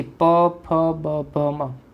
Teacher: એને તમે કઈ રીતે બોલી શક્યા? તો કે બે ઓઠના સ્પર્શથી. તો તેને કહેવાશે ઓષ્ઠી, એનું સ્થાન થયું.